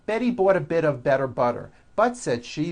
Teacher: you do not hear any T sounds TT they're only D's d d which your voic go over · notice that you do not hear any T sounds